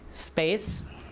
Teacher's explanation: If it's in the stress syllable or not, if it's after the S, the air is already out. There's no air for you to aspirate it. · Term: unaspirated